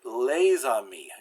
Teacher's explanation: So it's written like that, but I put this little connecting line to show that in this situation you would do the liaison and pronounce it les amis. You pronounce the S as a Z.